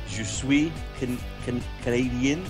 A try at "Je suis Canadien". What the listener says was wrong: Canadien, with the accent towards the end. Je suis Canadien.